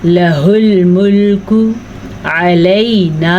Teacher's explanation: اب ہم نے اس کو کھینچ کے پڑھا ہے کیونکہ یہ الف مدہ ہے, الف سے پہلے زبر ہے تو اسے ہم کھینچ کے پڑھیں گے.